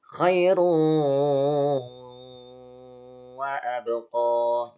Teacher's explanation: Jadi dimohon untuk idgham biguna itu ditahan ya. Idgham biguna ditahan selama 3 ketukan ya.